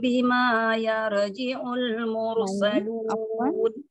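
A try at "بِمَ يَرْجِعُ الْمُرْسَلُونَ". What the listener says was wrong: Banyak satu harakat, hati-hati. Bima. Afwan, bimanya itu memang biasanya bima ada alifnya ya. Nah, ini bimanya tidak pakai alif, hati-hati. Iya, kepanjangan.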